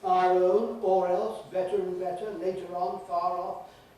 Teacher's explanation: Liaison is joining up where there has traditionally always been an R at the end of the word spelled ending in the letter R or ending in the spelling RE. We regularly keep that R, which we threw away in other situations 2.5 centuries ago